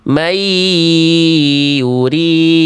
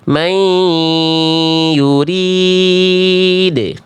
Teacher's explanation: jangan cuma dibaca may yurid tapi kasih sengaunya Bunda may yurid